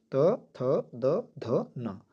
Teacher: दंत वर्ण वे ध्वनियां है जिनके उच्चारण में जीभ दांतों के पिछले भाग को छूती है